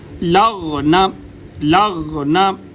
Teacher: غین اور خا یہ دونوں گلے کے سب سے اوپر والے حصے سے ادا ہوتے ہیں جو منہ کی طرف ہے.